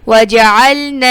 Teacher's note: نون آگے لام کے ساتھ مل رہا ہے